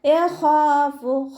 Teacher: ഖ ഇസ്തിഅലാൻ്റെ ലെറ്ററാണ്, തഫ്വീം ചെയ്തിട്ട് ഉച്ചരിക്കുക. അലിഫ് മദ് കൂടെ വന്നിട്ടുണ്ട്, 2 കൗണ്ട് നീട്ടിക്കൊടുക്കുക.